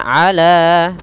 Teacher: pada lafal ala ada mad tabi'i, yaitu adanya fathah bertemu dengan alif, panjangnya 2 harokat